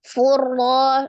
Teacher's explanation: Nah, tanwin, dhamma tanwin bertemu dengan huruf ra ya, yang kita pelajari minggu kemarin juga termasuk di dalam idgham bila gunnah. Diidghamkan ke dalam huruf ra, tidak disertai dengan dengung.